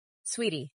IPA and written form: ˈswiːti (sweetie)